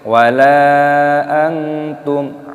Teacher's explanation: mim sukun yang bertemu dengan huruf ain. Ini hukumnya dibaca idhar syafawi, dibaca jelas. Jadi jangan didengungkan. Wala antum ma'a, tidak boleh.